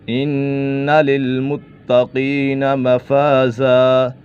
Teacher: نون مشدد ہے، نون مشدد میں ہمیشہ غنہ ہوتا ہے